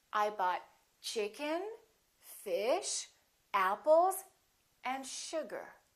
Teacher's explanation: the last one will have falling intonation so we go up up up down · each of those items that you list should have a rising intonation